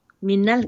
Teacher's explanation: Alif lam qamariyah ataupun izhar qamariyah. Lam dibaca.